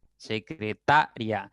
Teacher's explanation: secretaria es una palabra de cuatro sílabas y la mayor intensidad está en ta